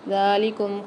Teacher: دال کے اوپر کھڑا زبر آ رہا ہے، اس کو ایک الف مدار کھینچیں گے